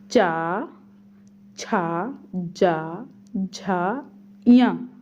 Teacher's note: इनको बोलते समय हम लोग तालु का स्पर्श करते हैं।